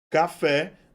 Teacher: eu vou ter como sílaba tônica a última sílaba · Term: oxítona